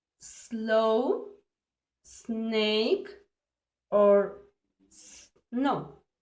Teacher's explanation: This sound is unvoiced because at the moment of pronouncing there is no vibration.